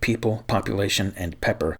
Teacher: we normally aspirate the first p but not the later ones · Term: aspirated plosives